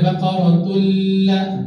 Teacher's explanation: Masukkan tanwin ke dalam lam tanpa dengung.